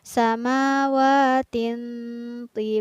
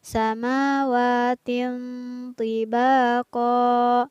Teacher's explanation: hukum bacaan ikhfa karena ada tanwin yang bertemu dengan huruf pohon maka tanwinnya harus dibaca samar atau tidak boleh dibaca jelas